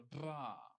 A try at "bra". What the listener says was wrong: No, don't use your tongue. You know the thing like motorboating? No, motorboating. Do that with your lips. Yeah, raspberries. They're basically the same thing.